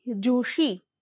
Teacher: સ ધ્વનિ નું તાલવ્ય સંઘર્ષી ધ્વનિ ષ માં પરિવર્તન થાય છે